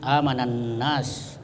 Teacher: Jadi tidak dibaca alif dan lamnya, yang dibaca langsung kepada nunnya dengan tasdid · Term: idgham syamsiyah